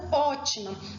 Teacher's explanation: são as palavras que possui a antepenúltima sílaba forte e todas elas são acentuadas então ótima quem a sílaba forte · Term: proparoxítona